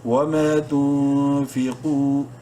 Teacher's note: فا زیر فی، قاف واو پیش نون، قاف کو منہ بھر کے پڑھتے ہوئے ایک الف کے برابر لمبا کریں گے واو مدہ کی وجہ سے. وما تنفقوا، الف سائلنٹ ہے.